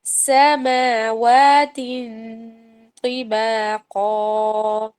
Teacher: سماوات باریک ہے اسمائلی فیس کے ساتھ، اور تو کے لیے آپ نے صرف زبان کہ سینٹر پارٹ کو یوز کرنا ہے تاکہ وہ موٹا آ جائے